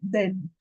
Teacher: Instead of then, they will say then as a D.